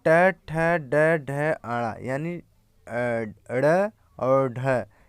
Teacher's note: ट वर्ग में ट ठ ड ढ अड़ा यानी ड़ और ढ ये मूर्धा का स्पर्श करते हैं